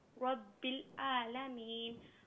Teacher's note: یہاں را پر زبر ہے، را کو پر کر کے پڑھیں